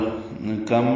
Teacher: اور کم میں کاف باریک ہے، میم ساکن پہ اظہار ہے